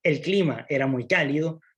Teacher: si estoy diciendo que el clima era cálido hay una bajada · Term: enunciativa